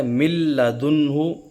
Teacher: من لدنہ، اب نون ساکن کے بعد لام آ رہا ہے تو نون جو ہے لام میں مل رہا ہے، مدغم ہو رہا ہے لیکن غنے کے ساتھ نہیں، بلا غنہ ہو رہا ہے، اس میں غنہ نہیں ہو رہا، جیسے من لدنہ اس میں آواز چھپ نہیں رہی، غنہ نہیں ہو رہا۔